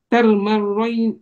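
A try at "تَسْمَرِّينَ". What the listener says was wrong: hurufnya sin dulu. Tas, bukan tar. Tas. Tas.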